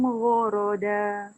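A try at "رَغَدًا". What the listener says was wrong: Terbalik. Ro dulu baru ghain. Ro ghoda. Ro dulu baru ghain. Bukan ghain dulu baru ro.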